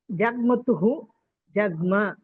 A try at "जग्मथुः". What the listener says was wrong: जग्मथुः इति अस्ति। तुः अत्र तुः इति अस्ति, मध्यमपुरुषे तुः थकार, महाप्राणथकारः अस्ति।